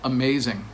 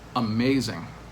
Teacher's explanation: three-syllable word but the stress is on that second syllable amazing we don't say amazing or amazing we say amazing so